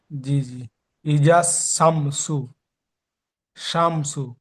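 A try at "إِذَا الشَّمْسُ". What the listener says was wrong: সিটি মারার মতন একটা আওয়াজ আসছে, আওয়াজ হবে না। শাম। শাম। ইজা শাম। ইজাস, ঠিক এমন ভাবে সিটি মারা আওয়াজ আসবে না। জিহ্বার, জিহ্বার বিষ উপরে চেপে ধরেন। ইজাস। ইজাস। ইজাস শামসু।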